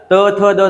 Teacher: त का जो उच्चारण होता है ना किससे होता है दंत से होता है